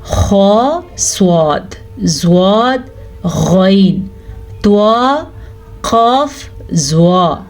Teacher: حروف مستعلیہ ان 7 حروف کے گروپ کو کہا جاتا ہے جو ہر صورت میں پر یعنی کہ موٹے پڑھے جاتے ہیں